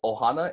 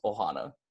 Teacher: there is a slight break at the start of the word so it's gonna be pronounced Ohana instead of just oh ha